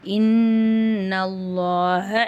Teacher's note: இன்னல நூன் மேல ஷத் இருக்கு அந்த இடத்துல நம்ம குன்னா செஞ்சு ஓதணும்